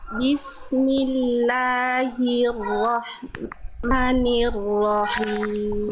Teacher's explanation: ro-nya bagus. Sangat luar biasa ya. Getarannya pas, tebalnya pas ya.